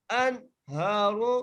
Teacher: ہم اس نون ساکن پر غنہ نہیں کر رہے ہیں